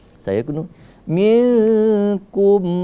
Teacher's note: karena nun mati bertemu dengan huruf kaf itu menjadi ikhfa